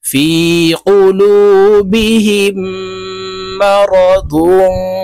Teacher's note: মিম জবর মা, র জবর র, দদ দুই পেশ দং, গুন্নাহ করতে হবে। তানওয়িনের পরে ফা ইকফার হরফ আসছে, তাই এই দদকে নাকের ভিতরে লুকাইয়া গুন্নার সহিত পড়ব।